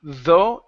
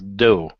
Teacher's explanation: instead of though, it's dough. Give me a good D here. Dough. Good.